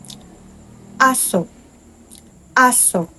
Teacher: Una ay ang simulang may impit na tunog.